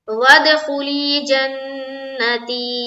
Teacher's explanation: वद दाल में कलकला होगा, इसलिए कि दाल के ऊपर जज्म है